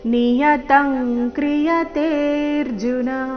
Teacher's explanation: ಅನುಸ್ವಾರದ ಉಚ್ಚಾರಣೆಯಲ್ಲಿ ಕ ವರ್ಗದ ಅನುನಾಸಿಕದ ರೀತಿ